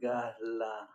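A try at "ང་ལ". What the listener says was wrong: Alors, pas ga, hein, c'est nga.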